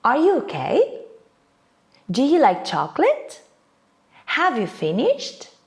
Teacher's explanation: my voice goes up at the end of the question. With yes and no question, intonation rises.